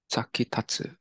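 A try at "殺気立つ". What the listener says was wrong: So this ta right here actually gets rendaku. So saki datsu. Sakidatsu.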